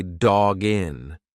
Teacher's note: When you've got that hard consonant followed by a vowel, just push the two together like it's one word.